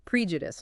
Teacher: Stress on the first syllable. The second e is weak, often awah.